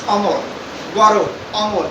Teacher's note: সংবৃত যেমন পরিবর্তন হচ্ছে, বিবৃত কিন্তু পরিবর্তন হচ্ছে না। বলা আছে যে ধ্বনি উচ্চারণকালে স্বরে অ থাকবে, এর কোনো পরিবর্তন হবে না, তাকে বলা হচ্ছে ওই ধ্বনির বিবৃত রূপ